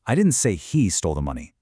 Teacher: Finally, let's move the stress to the word he. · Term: contrastive stress